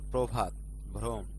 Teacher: শব্দের শুরুতে রফলা যুক্ত অ এর উচ্চারণ সংবৃত